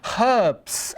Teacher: we use herbs in our cooking, so we pronounce that H